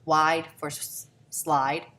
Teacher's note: because they're substituting a W for L because usually L hasn't developed yet